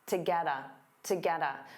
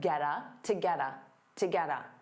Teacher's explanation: So to becomes that unstressed ta, get a combines together